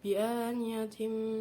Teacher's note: ada tanwin bertemu dengan huruf mim, yaitu bacaan idgham bihunah, dibaca mendengung